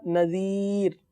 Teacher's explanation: آخر میں را باریک پڑھیں گے